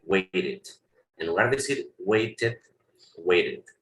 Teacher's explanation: la T la vas a pronunciar como el sonido de la R que tenemos en español cuando decimos barato, ¿ok? Barato, la R.